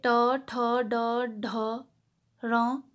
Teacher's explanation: ट वर्ग जो है वो आगे वाले जो जीभ से है वो मूर्धा को टच करती है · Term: मूर्धन्य